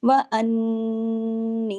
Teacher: लेकिन जब दो नून हो जाते हैं, उन्ना बड़ा हो जाता है। अकमल गुन्ना हो जाता है।